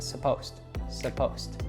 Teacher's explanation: In fact, we reduce it a lot. So the first syllable is just a schwa, sa, and the ed there is following an S, so it becomes a T sound.